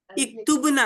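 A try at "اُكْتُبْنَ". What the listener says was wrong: उक्तुबना, पेश, पेश हो तो हमजा पे पेश। उक्तुबना, तुम सब औरतें लिखो, तुम सब बच्चियां लिखो।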